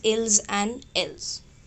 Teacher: They are pronounced just same il and l. We don't pronounce the last consonant s.